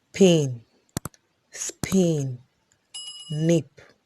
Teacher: P is a voiceless bilabial plosive